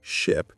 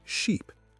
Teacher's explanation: Ship is short and quick, while sheep is long and stretched.